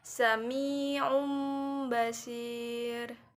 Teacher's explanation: mati atau tanwin tidak lagi dibaca sebagai Nun atau tanwin maka Nun atau tanwin nya berubah menjadi suara mim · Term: iqlab